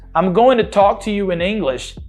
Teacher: eu precisei jogar minha língua para trás para fazer esse R retroflexo